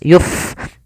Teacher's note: fa yang dia sukun, memiliki sifat hamas, maka dibaca dengan mengalirkan nafas. Yuf, jangan yup dengan pa.